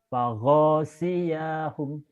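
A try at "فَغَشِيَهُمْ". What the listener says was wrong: Enggak ada yang panjang. Enggak ada yang panjang, betul. Go-nya juga pendek. Faghosiyahum.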